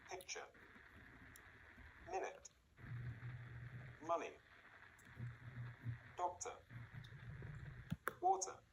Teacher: In all the words, the stress is on the first syllable.